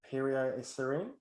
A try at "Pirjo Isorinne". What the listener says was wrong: Yes, it's close. Yes, we say the R differently. Arr.